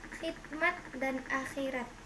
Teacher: Konsonan X atau konsonan K dan H, kriterianya bunyi dorsovelar, geseran bersuara